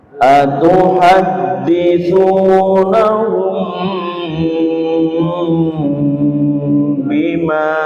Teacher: Mim sukun bertemu dengan ba juga dibaca dengung dengan lama. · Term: ikhfa syafawi, ikhfa safawi